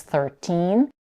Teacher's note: in teen numbers, such as 13, the primary stress is on the second part of the word.